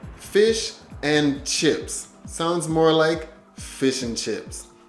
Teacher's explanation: and becomes very soft and it sounds almost like a solo N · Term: weak forms